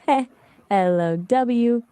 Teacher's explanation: You just say it like heh, LOW with the emphasis on the second syllable.